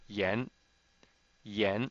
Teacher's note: So with the y before it, we come up with yen. And it's a rising tone, second tone